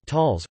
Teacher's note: In Yiddish it is [ˈtaləs], with the stress on the first syllable.